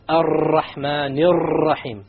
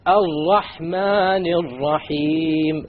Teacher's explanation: This is a mistake. You cannot allow the tongue to roll. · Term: One precise ra